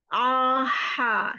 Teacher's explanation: Kalau ha, ke arah luar. Ha, karena dia punya sifat hames, harus berangin